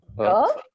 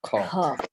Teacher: Little breath and a lot of breath. Ka has very little breath going out. Kha has a lot of breath.